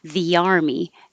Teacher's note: so i put a y in between v an army because when your tongue goes very high for the army it should slide down and kind of make a y